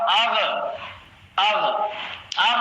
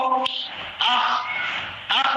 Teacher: غین اور خا، یہ جو ہے گلے کے اوپر کے حصے سے ادا ہوتے ہیں